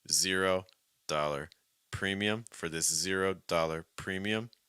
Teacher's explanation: 3 words that kind of work together with some slight emphasis on the first word, heavier emphasis on the last word. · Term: 3-word group